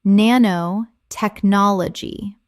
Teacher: Correct pronunciation: nanotechnology. 7 syllables with the stress on the fifth.